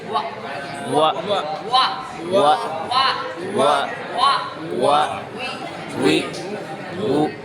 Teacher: انضمام شفتین دونوں ہونٹوں کا گول ہونا گول ہونے سے وہ ادا ہوتی ہے دونوں ہونٹ آگے گول ہوتے ہیں یہ سائڈ ملتے ہیں اور